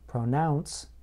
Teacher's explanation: in the word pronounce, I place stress on the second part of the word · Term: word stress